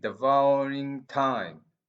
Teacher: So the pause is not after devouring, the pause is after time.